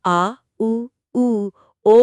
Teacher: और जब आप आ, उ, ओ बोलते हैं तो जीभ का पिछला हिस्सा हरकत में आता है। ये पश्च स्वर कहलाते हैं।